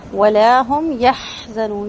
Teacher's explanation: ولا هم یحزنون، یح ہا کی آواز حمز کے ساتھ آئے گی، وسط الحلق سے ہا کو پڑھا جائے گا، اور نون یہاں پر مد عارض ہوگا۔